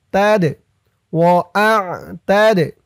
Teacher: দালটা কলকলার হরফ ধাক্কা দিয়ে পড়তে হবে